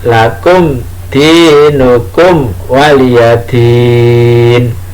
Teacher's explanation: mem mati bertemu dengan dal, mem mati bertemu dengan wawu, itu dibaca jelas, tidak dengung